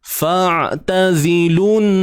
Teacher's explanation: Huruf ta pada atas ta, huruf zai baris bawah zi, kemudian lu ni lam baris depan ni terus masuk pada nun yang bersabdu dengan membunyikan dengung yang sempurna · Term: Wajibul ghunnah